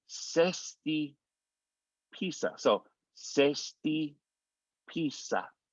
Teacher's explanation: the Z sounds like an S. So instead of zesty pizza, it's going to sound like sesti pizza.